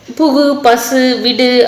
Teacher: தனிக்குறள் எழுத்தை வந்து அடுத்து ஒரு வல்லின உகரம் வந்துச்சு அப்படின்னா அது வந்து அதனுடைய மாத்திரை அளவு வந்து குறையாது முழுமையாக ஒலிக்கும் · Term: முற்றியல் உகரம்